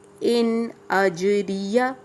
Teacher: اج جیم پہ جزم ہے، قلقلہ کریں گے.